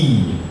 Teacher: here we've got the tongue high in the front of the mouth producing the sound e